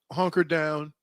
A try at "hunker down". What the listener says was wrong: Isn't it hunker down? No, you said honker, dude. Honker down is different.